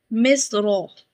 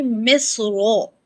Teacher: when raw is received with fatha, it's become heavy. Because moving raw with fatha is like tafkheem. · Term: heavy pronunciation